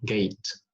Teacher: in gate, the final T there is not aspirated because it's not in initial position of the syllable, it's in final position, gate.